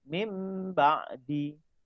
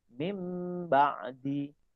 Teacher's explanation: Tulisan min ba'di kita baca mim ba'di. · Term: iqlab